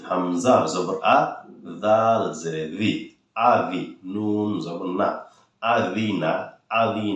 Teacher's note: জালটা জিব্বার আগা দিয়ে বলবেন